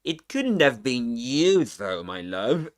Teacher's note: fall rising tone there on you implies that the contrast is being made between him and another person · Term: contrastive stress, full rising tone